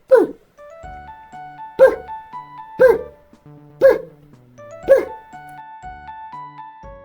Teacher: При вимові звуку П. Повітря, що видихається, зустрічає перешкоду. Наші губи. · Глухий приголосний звук. Він утворюється тільки за допомогою шуму без голосу. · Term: Звук П